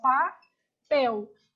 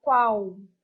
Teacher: Então, algumas bancas vocalizam a letra L. Então, aceitam a letra L com som o quê? De U.